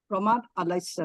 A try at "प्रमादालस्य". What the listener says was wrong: उसको ब्रेक मत करिएगा, बस प्रमादालस्य ऐसा आ जाए।